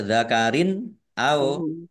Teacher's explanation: kasroh tanwin bertemu dengan huruf alif, bacaan izhar, dibaca jelas